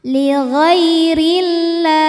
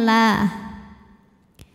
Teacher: lam pada lafaz Allah atau lam jalalah dibunyikan secara tarqik sebab huruf sebelumnya yang ro berbaris di bawah maka dibacanya tipis